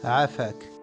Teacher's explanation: Imaginez que vous serrez légèrement la gorge. C'est un son guttural qui vient du milieu de la gorge. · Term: le son aïn